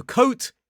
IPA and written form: kəʊt (coat)